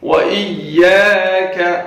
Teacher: واو پہ ہونٹ گول ہوں گے. وَإِيَّاكَ، یا کو کھینچ کے پڑھیں گے، الف مدہ ہے، اور کا یہاں پہ چھوٹا کیف ہے، کا یہ آواز نکلنی چاہیے.